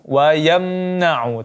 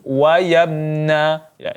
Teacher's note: mim mati bertemu Nun tidak dibaca dengung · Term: izhar syafawi